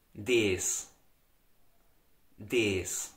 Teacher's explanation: Now, in the Austrian dialect, the article for the neutral nouns, das, is very widely pronounced as des